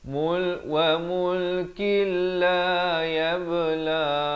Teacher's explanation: Di sini idgham bila gunnah, daripada mulkin jadi mulkil, masuk tanpa dengung